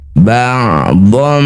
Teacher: Iqlab itu artinya menukar. Bunyi fathah tanwin yang awalnya dhon karena bertemu ba tukar dengan mim